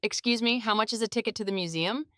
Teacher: Emphasize how much and museum.